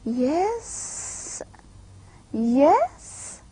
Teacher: fall and rise combination together they convey the feelings of surprise and skepticism